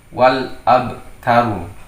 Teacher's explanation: Nah, jadi alnya terbaca jelas sehingga disebut sebagai bacaan, hukumnya menjadi idhar. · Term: idhar qamariyah